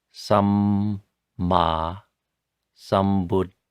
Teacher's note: So Samma Sambuddhassa, you pronounce both M's and both D's and both S's. The 2 D's, by the way, are a hard D and then an aspirated D.